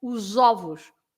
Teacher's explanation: in Portuguese, although the word is written the same, you pronounce the S as a Z sound